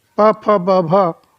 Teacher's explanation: प फ ब भ ओष्ठ में आते हैं